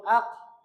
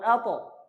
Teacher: কফ আর দাল সম্পর্কে আপনাদের বলেছি যে এই দুইটা হলো কলকলা হয়, অর্থাৎ ফিরে আসে পড়ার সময়